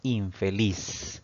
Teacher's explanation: dividimos esta palabra en sílabas pues tenemos tres sílabas sin embargo la mayor fuerza de voz al pronunciar esta palabra recae en la última sílaba contando de derecha a izquierda Entonces esta palabra es aguda pero